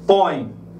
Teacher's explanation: Eu vejo que há a vibração das fossas nasais, tá? Então eu tenho aqui um ditongo nasal.